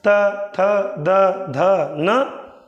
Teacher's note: दांत को। त थ द ध न, जीभ किसको स्पर्श कर रही है? दांत को स्पर्श कर रही है